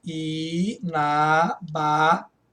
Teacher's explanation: Esta palavra, inabalável, tem acento na penúltima sílaba. Isso aqui é uma paroxítona terminada em L.